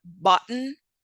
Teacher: For example, when we pronounce the word button, notice how there's a stop between the first two sounds. That is our glottal stop.